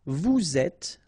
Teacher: little liaison between the two, and then final S not pronounced